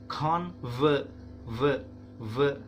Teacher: Nah, v-nya ya, gini dibacanya v. Nah, si gigi atas menyentuh bibir yang bawah guys